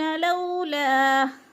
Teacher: ला यअलमून लौला, लो पे भी वो लीन है, वो साकिन से पहले लाम के ऊपर ज़बर है तो वो लीन को खींचते नहीं हैं, इसलिए वो लीन को झटका भी नहीं देना और खींच कर भी नहीं पढ़ना